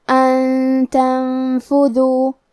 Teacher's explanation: کلمت ان کے آخری میں نون ساکن ہے، پھر حرف التا آتا ہے. کلمت تنفذو تا حروف الاخفاء میں سے ہے تو ہم یہ حکم کو غنہ کے ساتھ ادا کریں گے